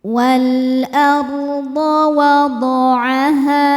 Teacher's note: Ha hukumnya mad tabi'i dhahiri sebab ada alif didahului harokat fathah. Cara bacanya panjang 2 harokat.